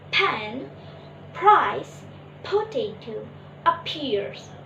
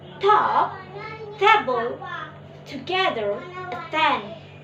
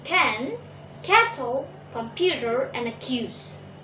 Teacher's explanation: Aspiration: when p, t, and k sounds come at the beginning of a word or a beginning of stressed syllable, they are aspirated. They are pronounced with a puff of air.